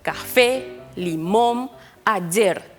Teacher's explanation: recargamos la voz en la última sílaba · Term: palabras agudas